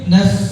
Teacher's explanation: Naf seperti orang niup. Jangan nanti huruf fa sukun diganti jadi pa.